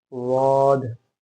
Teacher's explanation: होंठ गोल ना हो, मुंह सिंपल हो